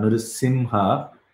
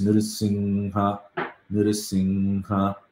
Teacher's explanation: It's going to be like, you should not be saying it, don't close your lips and then say that. You have to pronounce it through the nose. I'm not closing my mouth, lips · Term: Anuswara